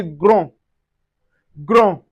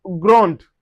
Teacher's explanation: The D is not pronounced, but once you have the E that is followed, we can say grande, which signify feminine.